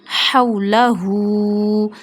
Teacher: Meme, alif, fatha, ma, hawlahu, ha, waw, fatha, haw. We read ha from the middle of our throat, so read it with the middle of our throat, very soft